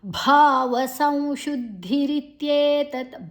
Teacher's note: ಭಾ ಮಹಾಪ್ರಾಣ ಭಾ ದೀರ್ಘಾಕ್ಷರ.